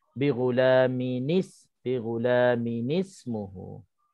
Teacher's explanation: bila bertemunya tanwin dengan hamzah wasal, kita tambahkan nun baris bawah ni